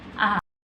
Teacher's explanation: vokal netral, vokal yang diucapkan dengan bentuk bibir tidak bulat dan tidak melebar